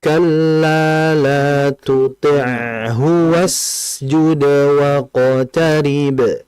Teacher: Artinya sinnya terlalu cepat. Sin itu harus dialirkan dulu.